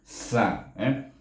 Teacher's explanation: Sin baris di atas bunyi sa dengan hamas dan safir sa.